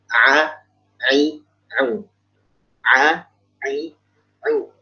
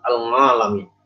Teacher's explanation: Dia mesti jelas ainnya. Jangan ngo, ngi, ngu. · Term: huruf ain